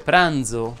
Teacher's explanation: si dice pranzo con la z sonora